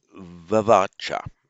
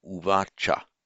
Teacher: Samprasarana is a phenomenon of Sanskrit phonetics, whereby an unstressed, because in Vedic times it was stressed on the R, vavacha would have been. So if you had a va before the stressed syllable, it would just soften to an u, so uvacha.